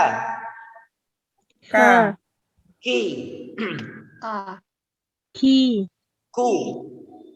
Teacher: Jadi kaf itu memiliki sifat hamas. Sifat hamas itu udara yang mengikuti.